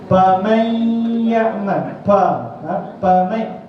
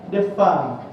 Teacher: Fa dia tak boleh dua bibir. Kalau dua bibir akan jadi pa.